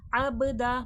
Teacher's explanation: बा में क़लक़ले की सिफ़ात वाज़े होगी, आवाज़ पलट कर सुनाई देगी।